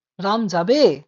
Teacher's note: আমরা প্রশ্ন করার সময় এভাবে শেষের যে ধ্বনিটা আছে তাকে কিন্তু টান দিই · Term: সুর তরঙ্গ